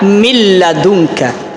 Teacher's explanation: memasukkan huruf nun ini kepada huruf setelah Nun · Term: idgham bilagunnah